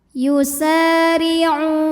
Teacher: Alladzina yusari'u. Huruf ra dibunyikan secara tarqiq sebab berbaris kasrah, maka ra tipis.